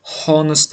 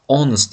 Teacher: honist deb o'qimadim, onist deb o'qidim, ya'ni h talaffuz qilinmayapti.